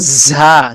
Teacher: সিটি হবে এবং ঝাঁঝালো আওয়াজ হবে